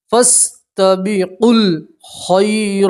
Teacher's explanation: پڑھیں گے فَاسْتَبِقُوا یہ واو الف اور الف نہیں پڑھیں گے قاف کو سیدھا لام سے ملائیں گے